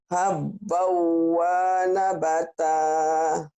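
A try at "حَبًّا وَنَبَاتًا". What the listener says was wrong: Nah, sekarang saya tanya, wawunya panjang nggak ya Bu ya? Pendek, iya. Pendekin ya Bu ya.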